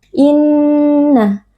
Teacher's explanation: Nun bertasydid wajibul ghunah wajib dibaca dengan dengung yang dipanjangkan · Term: wajibul gunnah